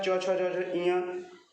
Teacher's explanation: ये च वर्ग जो है तालु, तालव्य के अंतर्गत आएंगे, यानी तालु से बोला जाता है।